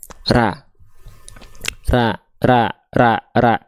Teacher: terdengar condong pada vokal a karena pangkal lidahnya terhampar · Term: istifal